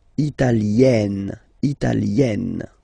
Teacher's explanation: when you get this E followed by a double consonant like here, then you will have to open it.